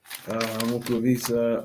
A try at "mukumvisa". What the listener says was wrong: No, just remember, when I give you the nasal, you drop it. Mukumvisa una.